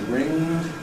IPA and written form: rɪŋd (ringed)